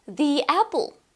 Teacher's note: 'the' is sometimes pronounced as 'ðiː'. Usually it happens when the following word starts with a vowel sound.